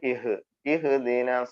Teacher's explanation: ഹ എന്ന അക്ഷരം വായിൽ നിന്ന് കാറ്റ് പുറത്തേക്ക് വരണം തൊണ്ടയിൽ യുടെ അങ്ങേയറ്റാണ് തൊണ്ടക്കുഴിയിൽ നിന്നാണ് ഹ് എന്ന അക്ഷരം വരുന്നത് അതുപോലെ അതിനു തൊട്ടുമുമ്പ് ഇ എന്ന് പറയുന്നതും തൊണ്ടക്കുഴിയിൽ നിന്നാണ് ഇഹ് ഇഹ് രണ്ടിനും